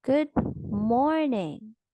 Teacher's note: a fall from a high pitch on the more syllable of good morning suggests more excitement than a fall from a low pitch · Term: attitudinal function